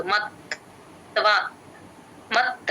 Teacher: ఒక్క ఒక్క సెకండ్ పట్టుకొని చెప్తే త కింద వత్తు క్లియర్ గా వినిపిస్తుంది మత్వ అలా అని ఎక్కువ చెప్పకూడదు మత్వ అలా కూడా చెప్పకూడదు మధ్యస్థంగా చెప్పాలి